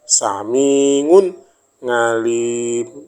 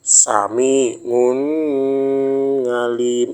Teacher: halfiqi dibaca sami un ngalim jelas unnya tanpa didengungkan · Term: izhar